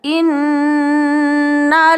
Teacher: zi panjangnya numpang lewat saja, ini dinamakan mad tabi'i